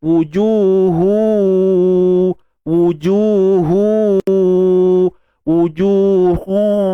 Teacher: Kita picit hidung tu ada gangguan. Maknanya adalah unsur dengung tu. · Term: idgham bi gunnah